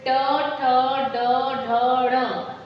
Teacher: ये मूर्धा से, जो ऊपरी हिस्सा है, जीभ मूर्धा को टच करती है।